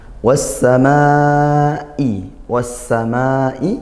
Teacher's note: Nah, hati-hati setelah panjang seperti ini. Huruf hamzah itu punya sifat ee syiddah dikuatkan. Sehingga ketika kita setelah panjang wasamaai, nah kita tekan karena makhrajnya juga dari pangkal tenggorokan I. · Dibaca masuk langsung ke huruf huruf syamsiyahnya yaitu huruf sin. Sehingga alamnya ini ee samar tidak terbaca langsung masuk ke huruf sin. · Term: sifat syiddah, idgham syamsiyah